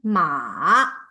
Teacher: And the third tone, it's like make a turn. It's falling first and then rising. So it's like a valley tone. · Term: third turn